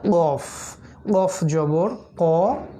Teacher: আলজিবের গোড়া থেকে উচ্চারণ করতে হয়